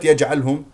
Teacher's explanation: جيم مقلقله قلقله صغرى في وسط الكلام